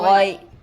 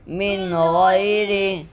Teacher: یا ساکین سے پہلے زبر ہے اس لیے یا لین ہوگی. یا لین کو نرم آواز کے ساتھ جلدی پڑھے. معروف پڑھے, مجھول آواز سے بچے.